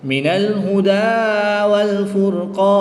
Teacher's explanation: الف مدہ کے بعد نون کی زیر کو ساکن کر دیں گے تو یہاں پر مد عارض ہوگی، 2 سے 3 الف تک کھینچ کر پڑھیں گے